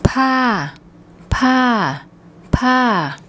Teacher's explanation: we have a high class initial consonant and we're using the second tone mark, so we get a falling tone.